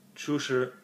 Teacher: chu is the rising tone, and shi is a flat tone.